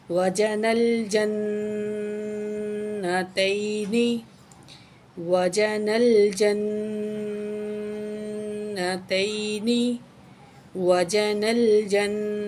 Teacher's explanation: وجن الجنتین دان، تو اس کا جوڑ ہے جی، جیم کے اوپر زبر ہے، نون کو لام سے ملائیں گے، نون زبر لام نل، نون زبر لام نل، جیم زبر نون جن، کیونکہ تشدید ہے جیم کو نون سے ملائیں گے اور نون پہ غنہ بھی کریں گے، تشدید ہے، جیم زبر نون جن، نون زبر نا، تا زبر یا تی، نون زیر نی، وجن الجنتین، وجن الجنتین، وجن الجنتین، دال الف زبر دا، نون دو زیر نن، دانن، وقف کریں گے تو دان ہو جائے گا، تو پڑھتے ہیں وجن الجنتین دان۔